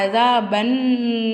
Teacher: சத்து செய்யப்பட்ட நூன் வந்திருக்கு. அது நம்ம நல்லா என்ன செய்யணும், அழுத்தி உச்சரிக்கணும்.